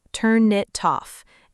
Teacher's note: In slow speech, you might say each word clearly, but naturally it sounds like turn it toff. It all flows together.